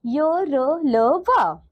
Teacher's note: अब दूसरा देखिए बच्चों, अंतस्थ व्यंजन यानी कि सेमी वोवल्स क्या होते हैं? अंतस्थ व्यंजनों के उच्चारण में जिह्वा का पूरा स्पर्श मुख के किसी विशेष भाग के साथ नहीं होता।